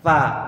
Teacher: Jadi jangan pa. Ini kalau mungkin sebagian di antara logat daerah antum mengucapkan F kok pa.